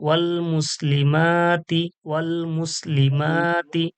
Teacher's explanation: আলিফ মাদ্দা এক আলিফ টানতে হবে, আর কোথাও টান নেই।